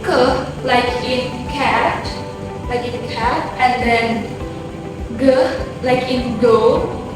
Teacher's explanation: produced when the back of the tongue touches the soft palate